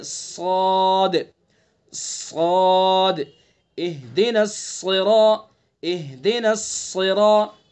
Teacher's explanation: اس صاد کی جو صفت ہے وہ بلندی, پر ہونا اس کی صفت ہے, بلندی صفت استعلا اس کے اندر پائی جاتی ہے.